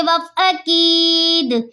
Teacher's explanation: دال حرف قلقلہ میں سے وف میں ساکین ہے، اس لیے ہم یہاں پہ قلقلہ کریں گے